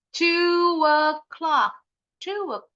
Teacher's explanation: jadi kayak nambahin bunyi huruf w ini kan dua huruf vokalnya linking vowel to the next vowel sound